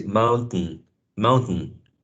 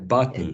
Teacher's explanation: you let some of the airstream go through your nose